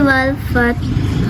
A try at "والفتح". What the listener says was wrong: والفتح، ہا کی آواز آنی چاہیے۔